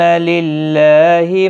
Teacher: اللہ کا لام باریک پڑھا جائے گا زیر کی وجہ سے